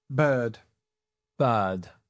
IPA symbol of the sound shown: ɜː